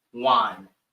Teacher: when I combine the W and the N, I make it one syllable and cut off the last sound.